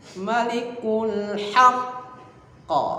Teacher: Ya, itu ada syiddah, ada tasydid. Jadi bacaannya harus ditekan ya, kemudian pantulkan. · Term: qalqalah akbar